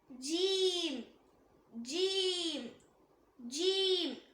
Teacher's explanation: இத நாக்கோட நடுப்பகுதி மேல் முரசை டச் பண்ணும்போது சொல்லக்கூடியது. மேல் முரசுனா ரூஃப் ஆஃப் த மவுத்னு சொல்வாங்க.